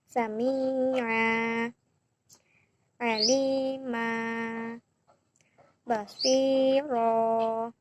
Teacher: bacaan panjang pada akhir kata atau kalimat sebagai pengganti dari suara tanwin fathah yang tidak berbunyi lagi karena bacaan diwakufkan. Cara membacanya adalah 2 harokat atau 1 alif. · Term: mad iwad